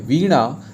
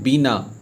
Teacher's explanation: हर जगह दांत ना जो है इस का प्रयोग करते हैं मुर्धनी ना का प्रयोग नहीं होता है उसके जगह दांत एन का प्रयोग करते हैं